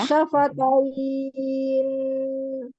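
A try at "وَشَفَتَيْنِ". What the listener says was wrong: Iya, tapi jangan kelamaan ya bainiahnya. Sedikit aja. Lihat ini huruf mat apa huruf lin? Matlin. Karena wakof yang didahului oleh huruf lin. Maka diperhatikan hurufnya. Kalau ya sukun sebelumnya kasroh baru mat arid sukun. Iya, kalau ini kan huruf lin, harfulin. Berarti matlin. 2, 4 atau 6, Masya Allah.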